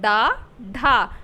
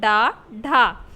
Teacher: द्विगुण व्यंजन कहलाते हैं। इनमें जीभ पहले ऊपर उठकर मूर्धा को स्पर्श करके और फिर झटके के साथ नीचे जाती है।